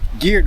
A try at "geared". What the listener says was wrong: It's got a way more R in there, huh?